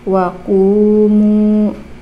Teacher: dhammah bertemu dengan wawu sukun atau wawu mati, ini dibaca panjang, 2 harokat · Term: mad tabi'i